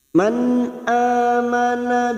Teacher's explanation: Alif kecil di atas atau fathah berdiri dua harakat kita panjangkan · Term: Mad Thobi'i